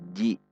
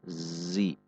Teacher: Zi, zai kasrah, satu harokat. Perhatikan sifat dan makhraj huruf zai, bukan ji, namun zi. Ada z, ada gesekan